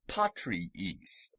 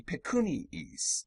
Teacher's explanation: These double I sounds are not diphthongs, but two different syllables separated by a Y sound, iis, which is implied by the juxtaposition of the two I's.